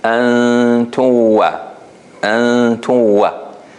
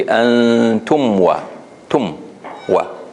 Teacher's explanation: you notice that my lips didn't close here between the mim and the waw